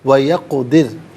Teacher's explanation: رکنے کی صورت میں را ساکن کو باریک پڑھیں گے کہ ماقبل دال کے نیچے زیر ہے